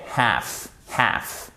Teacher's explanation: on ne prononce pas le L